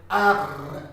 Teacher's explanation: R, guttural throat, coming from the throat. Okay, like you gargle, you say R.